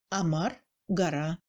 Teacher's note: À la place d'un O, on entend nettement le A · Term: réduction vocalique